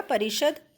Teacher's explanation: ये जो हमारा श होता है ये मूर्धन्य श कहलाता है